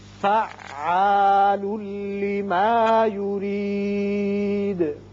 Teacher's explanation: یہاں ادغام ہوگا لیکن بغیر غنہ. یہ را باریک پڑھیں گے، نیچے زیر ہے.